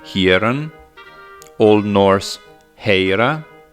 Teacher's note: Another thing which clearly distinguishes the northwestern branch from the eastern one is that we find rhotacism only in the former. An originally sibilant sound was transformed, in some specific contexts, into vibrant r in the northwestern area.